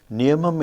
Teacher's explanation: Niyamam, in which there is no long vowel. So the first syllable is stressed because you couldn't find any long vowel.